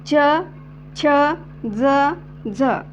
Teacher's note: त्याला दंत आणि तालव्य असं म्हणायचं ओके दंत तालव्य वर्ण असे म्हणायचं